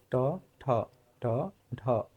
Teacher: মূর্ধ তালুতে খুব শক্তভাবে স্পর্শ করে দরজায় যে টকটক করার মত যে সাউন্ডটা হয় সেই সাউন্ডটা হবে তখন সেটাকে বলা হয় মূর্ধ্বনি দেখো ঠ জীবটাকে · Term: মূর্ধ ব্যঞ্জন